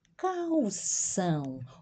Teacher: observa aqui o l diante de uma consoante pronunciamos uma o